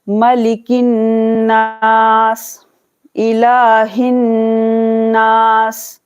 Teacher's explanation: جہاں بھی نون پر تشدید دیکھیں آپ کریں غنہ, ٹھیک ہے, یہاں پر 2 سیکنڈ کے لیے غنہ کرنا ہے